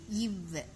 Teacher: மேல்வாய் பல்லை கீழ் உதடு பொருந்துவதால் பிறக்கிறது